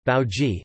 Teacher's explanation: Pronunciation of the vowels ai and au as diphthongs, rather than monophthongs (as in standard Hindi)